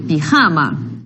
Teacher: Observa que la sílaba tónica es la penúltima. Es la penúltima y así que tenemos nosotros una palabra grave.